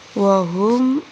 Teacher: ہا کو حلق کی طرف سے نکال لیں گے